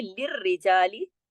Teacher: آپ ذرا آیت نمبر 7 پر آئیے، للرجالی، دیکھیے را کے اوپر تشدید ہے اور جوڑ کے سختی سے پڑھنا ہے، لیکن را کو موٹا نہیں کرنا کیونکہ باریک حروف ہیں سارے